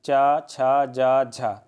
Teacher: स्पर्श संघर्षी, संघर्ष हो रहा है हवा का